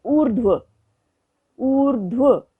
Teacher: देखते हैं, जैसे ऊर्ध्व, ऊर्ध्व, आप उच्चारण से समझ पा रहे होंगे कि रेफ र लगा तो व के ऊपर है, उससे पहले स्वर रहित ध है और रेफ र का उच्चारण ध से भी पहले हो रहा है